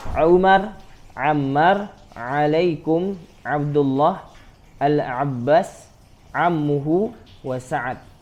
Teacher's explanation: huruf ain ini terletak di tengah-tengah rongga tenggorokan. Ya, dia di tengah dan bunyinya itu setara dengan membunyikan huruf H.